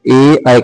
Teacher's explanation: ए ऐ मात्रा जो होते हैं संयुक्त स्वर। इसको हम लोग कंठ और तालु से बोलते हैं ए, ऐ को। ठीक है?